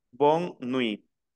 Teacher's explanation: miren que no pronuncio la t final la regla me dice que la t final no se pronuncia